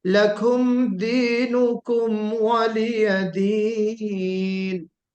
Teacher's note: लकुम गुन्ना नहीं करना है, इजहार करना है।